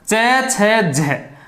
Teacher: जीवा जो है वो तालु पे स्पर्श हो जाती है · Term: स्पर्शी संघर्षी